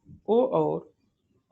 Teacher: कंठोष्ठ उच्चारण स्थान है, कहाँ से होता है? ओ और औ का जो उच्चारण स्थान है वह कंठ और ओष्ठ दोनों से होता है